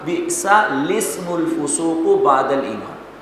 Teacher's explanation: یہاں پر ذرا ہجے کے برعکس ذرا بالکل اس کو الگ حیثیت حاصل ہے، اس کو اس انداز میں پڑھیں گے کہ لام کو بھی نہیں پڑھیں گے اور اسم کے حمزہ کو بھی نہیں پڑھیں گے